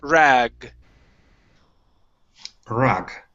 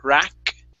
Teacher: Last one here is the G sound at the end of this word. It's a G instead of a K sound. Okay, the K is an unvoiced sound. That would be rack. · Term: voice sound